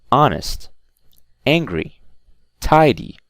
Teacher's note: two-syllable adjectives, the stress is also on the first syllable